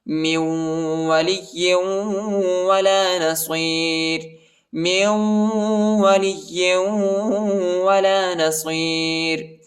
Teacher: نون کو واو کے ساتھ ملائیں گے، نون نہیں پڑھا جاتا، نون ساکنہ ہے، نون پر جزم آیا ہے، اور لام کو جو ہے یا کے ساتھ ملائیں گے اور یا کو واو کے ساتھ ملائیں گے، ٹھیک ہے۔